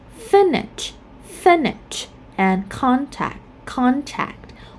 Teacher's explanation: for the verb like finish, and contact, we stress at the first syllable even though they are verb.